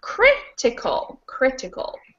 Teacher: t is two and crit is three so in this case counting backwards the third from the end is actually the first syllable